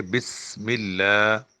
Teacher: سیٹی سین کی ہوتی ہے لیکن یہ باریک ہوتا ہے